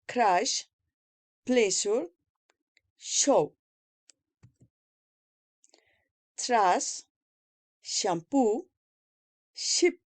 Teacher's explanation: place of articulation palato-alveolar, mode of articulation fricative, soft palatal position oral